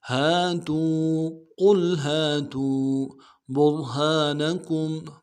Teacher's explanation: تا کو واو کے ساتھ ملانا ہے، واو مدہ ایک الف دال میں کھینچیں گے ۔ ہاتو، قل ہاتو برہانکم، با کو را کے ساتھ ملانا